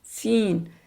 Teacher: यह जुबान लगती है दांतों को निचले दांतों के किनारों को ऊपर जाती है लेकिन मुंह जो है फैलता है मोटा नहीं होता। बारीक आवास है इसलिए सीन है।